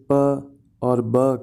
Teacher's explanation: हम लोग पहले अपने लिप्स को क्लोज़ करते हैं और फिर हवा के थोड़े से प्रेशर के साथ साउंड्स क्रिएट करते हैं